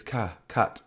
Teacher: the U sound here is actually being made or formed as a neutral sound, as a neutra, or the schwa sound.